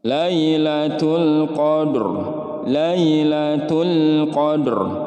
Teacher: Kemudian di sini ada alif lam qamariyah. Alif lamnya dibaca jelas, tidak boleh ada pantulan dan juga tidak boleh ditahan terlalu lama